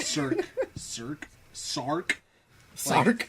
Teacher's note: they add a vowel in between S and R